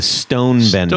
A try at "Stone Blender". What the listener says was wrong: Stone blender. With an L.